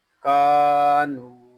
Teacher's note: یہاں کاف کو ایک الف تک کھینچ کر پڑھیں گے اور نون کو بھی ہم ایک الف تک کھینچ کر پڑھیں